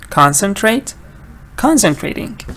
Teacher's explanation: So I'll give you the word concentrate. So concentrate stresses on the first part.